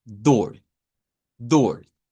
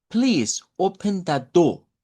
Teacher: de acuerdo al acento no rótico del inglés británico o el acento de la corte del rey, la r no debería de sonar. Así que si usted escucha a alguien decir, "Please open the do".